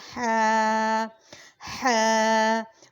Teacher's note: اس کا مخرج ہے درمیانی حلق